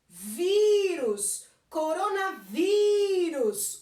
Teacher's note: O vi é mais forte, ou seja, não é a última é a penúltima, mas ela termina em us, então tem acento.